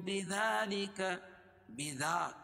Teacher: دال پر کھڑا زبر قائم مقام الف مدہ ہے کہ اس کو ایک الف کے برابر کھینچ کے پڑھیں گے